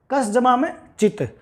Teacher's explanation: चैवर्ग के साथ जब दंत सकार का मिलन हुआ तो इसके स्थान पर तालव्य सकार आ गया